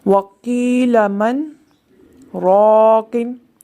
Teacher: سکتہ آپ نے جیسے پڑھا کہ سانس جاری رہے اور آواز رک جائے